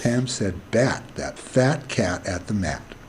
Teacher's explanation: so here's bat the lower one here is a jaw displacement we see open open open open for each um syllable and the biggest syllable open is on bat and the next one is on fat